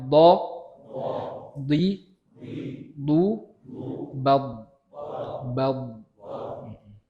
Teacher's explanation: Huruf do terputus, agak terputus suaranya. Jadi nggak berlanjut.